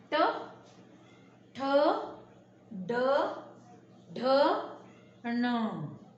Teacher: मूर्घन्य म्हणजे ज्यावेळेस आपल्या जिभेला आपण तोंडात वळवतो आणि मग त्या शब्दात त्या व्यंजनांचा उच्चार निघतो त्याला म्हणतात मूर्घन्य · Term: मूर्घन्य व्यंजन, मूर्धन्य व्यंजन